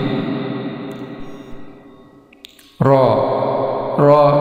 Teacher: huruf ra ini berbaris atas, ini dibaca tebal, tafkhim. Ra, kemudian huruf alif ini sebelumnya fathah, ini mad asli di ayun tidak lebih dari 2 harakat.